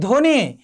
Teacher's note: এখানে ব ফলার উচ্চারণ হয়নি